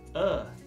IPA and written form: ɜːrθ (Earth)